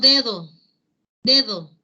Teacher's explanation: tenemos de 2 inicio se mantiene el sonido oclusivo dental pero en el interior la palabra entre vocales ese sonido oclusivo dental sonoro se debilita deja de solo exclusivo y se convierte o implica tivo que